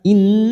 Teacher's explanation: Nun yang bertasdid gunnah musaddadah kita tekan 3 ketuk atau 3 harokat.